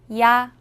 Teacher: 야는 먼저 이를 소리 내다가 바로 이어서 아를 소리 내며 발음합니다. 이와 아를 순서대로 빠르게 말해요.